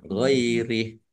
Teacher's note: waqaf haknya dibaca sukun dan dibaca pendek karena tidak ada tanda panjangnya